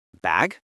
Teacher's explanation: They use their tone of voice to ask the question. Their voice goes up at the end. Bag. >> So listeners, you need to listen for that rising intonation.